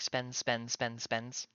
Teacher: that DS turns into a Z. So, it's more like spins, spins, spins, spins. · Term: natural blending